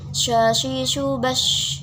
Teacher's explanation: Jadi angin yang ada di mulut menyebar. Jadi seperti syashi, shubash. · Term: tafashi